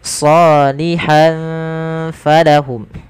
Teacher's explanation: maka ini kita hukumi dengan bacaan ikhfa dan samarkan tanwinnya ke huruf fa. Maka tidak dibaca salihan falahum tapi salihan falahum.